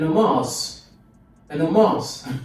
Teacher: So the stress is on the second syllable